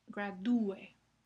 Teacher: Como vemos que la U tiene la tilde encima, el acento ortográfico encima, esto nos da una pista, nos dice que esa U no es diptongo, no va a formar diptongo con la siguiente E, sino que va a hacer yato con la E y estar en una sílaba diferente. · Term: hiato